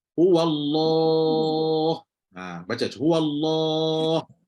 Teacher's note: Maka dia bawa dua sekali huruf. Lam pun tebal, alif yang lepas lam tu pun akan tebal lah.